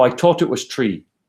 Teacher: an Irish accent wouldn't use the inter Dental fricative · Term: dental plosive